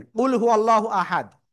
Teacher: আল্লাহ শব্দ লামের ডাইনে জবর রয়েছে। মোটা আওয়াজে পড়তে হবে।